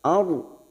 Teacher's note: Ada ra sukun yang sebelumnya fathah, kita baca tafkhim atau tebal